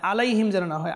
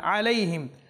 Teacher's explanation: খেয়াল করতে হবে যেন আমাদের আইন যেন হামজা না হয়